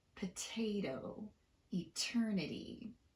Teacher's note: in potato and eternity i did tap the second t but not the first one because it falls in the stressed syllable